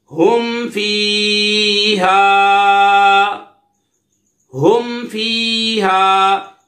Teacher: میم ساکن کے بعد فا آ رہا ہے، یہاں پہ اظہار شفوی ہوگا، یعنی غنہ نہیں کریں گے۔